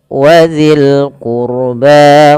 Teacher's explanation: tebalkan ro-nya karena huruf ro sukun didahului dengan dhamma